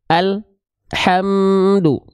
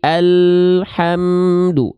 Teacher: antara bunyi al dengan bunyi huruf berikutnya tidak boleh ada jeda hening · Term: tawasud